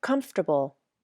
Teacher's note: here is a close-up of my mouth as I say comfortable you can't see the back of my tongue but it retracts to make the K sound then my mouth closes and my lips come together for the · my mouth closes and my lips come together for the M my front teeth quickly touched the back of my bottom lip for the F sound then my tongue tip comes up for the true T then